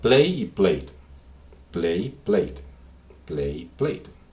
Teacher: esta e prácticamente es muda cuando yo la pronuncio